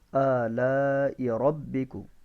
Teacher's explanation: دیکھیں اس کے اوپر کھڑی زبر ہے الف کے اوپر، اس وجہ سے اس کو تھوڑا سا لمبا کرتے ہیں، اور اس کے اوپر مد متصل ہے، جو موٹی مد ہوتی ہے اس کو 5 الف لمبا کرتے ہیں